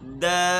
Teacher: 5 الف ہم نے کھینچ کر پڑھنا ہے، دال۔ اچھا، دوسری بات، اس کو پڑھتے وقت یہ آواز بھی زیادہ نہ ہو، جمی ہوئی آواز نہ ہو، دال، دال۔